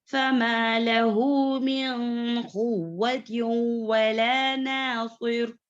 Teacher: فَمَا لَهُ دو مقدار میں کھینچنا ہے کیونکہ یہ صلہ صغرا ہے. صغرا مطلب چھوٹی، یعنی کہ دو مقدار والی. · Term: مد الصلہ صغرا